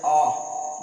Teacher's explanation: ये जो उच्चारण हो रहा है वह जीभ के बीच वाले भाग से हो रहा है। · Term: मध्य स्वर